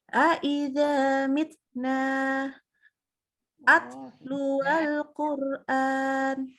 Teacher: jadi ta itu namanya dia hams, keluar udara, tapi dia syiddah, jadi dia pendek aja.